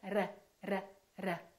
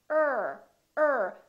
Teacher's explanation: So the American R, the tip of the tongue curls and we pull it back